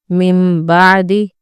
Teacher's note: جب نون ساکن یا تنوین کے بعد حرف با آئے تو نون کی آواز ایک چھوٹے سے میم میں بدل جاتی ہے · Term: اقلاب